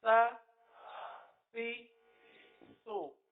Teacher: یہاں پر بھی آپ دیکھیے کہ سو میں پہلے تو زبان کا سرا لگ رہا ہے اس کے اپنے مخرج پر, یعنی اوپر کے دانتوں کے اندرونی کنارے پر, اور لگنے کے بعد فوراً ہی ہونٹ گول ہو رہے ہیں